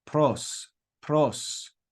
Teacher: p i p it makes the P sound we then have the letter rho which is like an R but it's got that Spanish trilled sound to it